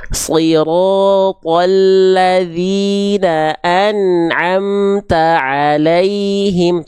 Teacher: Jadi antara an dengan a itu nggak boleh ada putus. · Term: nun sukun